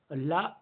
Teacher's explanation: ला को पार्श्विक व्यंजन बोलते हैं